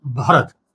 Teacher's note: भ हस्व है, र ह्रस्व है और त ह्रस्व है। और इस इन्हीं तीनों को हम लोग एक-एक मात्रा गिनेंगे।